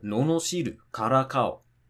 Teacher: And even if we take 4-syllable verbs like no no shiru or kara kao, again, it's going to be, as long as it's not a Heiban verb, then the drop is going to be from the second to last syllable